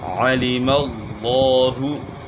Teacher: لفظ اللہ کے لام سے پہلے والے حرف پر زبر ہے تو لفظ اللہ کا لام موٹا پڑا جائے گا